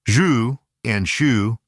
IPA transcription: ʒ ʃ